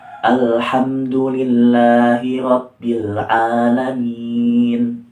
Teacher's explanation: bacanya sedikit dimingkemkan gitu cara membaca minnya.